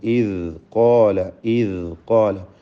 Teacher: വ ഇബ്റാഹീമ ഇദ് ഖാല. ഇവിടെ ഖാഫിനും അലിഫിനും തഫ്ഖീം ഉണ്ടാവണം. തടിപ്പിച്ച് ഉച്ചരിക്കുക.